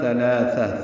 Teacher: ثلاثہ ثا کو تاء مربوطہ سے ملا دیں گے، وقفاً یہ ہا میں تبدیل ہو جائے گی، دونوں زبریں ختم ہو جائیں گی اور ہا پہ ہمس ہوگا، ثلاثہ یعنی سانس اس کے پڑھتے ہوئے جاری رہے گی۔ · ثا نرمی سے ادا ہوگا، زبان کی نوک سامنے کے دانتوں کے اندرونی کناروں سے لگائیں گے، یعنی ثناء علیہ کے اندرونی کناروں سے لگائیں گے۔